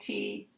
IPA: t